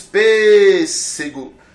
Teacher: onde é que está a sílaba tônica está na primeira sílaba · Contando daqui para cá, última sílaba, penúltima e antepenúltima. A sílaba tônica está na antepenúltima. Logo, essa palavra é uma proparoxítona.